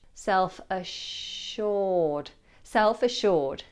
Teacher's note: the double S is pronounced as a sh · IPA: /ˏself əˈʃɔːd/